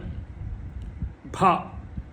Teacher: It's called, very peculiar to Sanskrit, it's called voiced aspirates